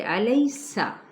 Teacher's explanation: قالا، قا پر پڑھا جائے گا الف مدہ کے ساتھ، لام کی حرکت کو نہیں کھینچیں گے، الیسا، لئی پہ یا لین، سین پہ سیٹی کو واضح کریں